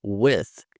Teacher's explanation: Esse I aqui, ele tem um som mais puxado para o E.